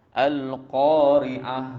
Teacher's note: ta marbutah dimatikan, ya, berbunyi dengan ha yang tebal, ha simpul tu. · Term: hukum khafa